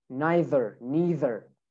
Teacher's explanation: So you realize that in America, we add the R, neither, neither.